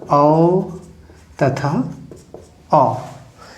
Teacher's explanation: जिन स्वरों का उच्चारण जीभ के पिछले भाग से होता है, पश्च स्वर कहलाते हैं।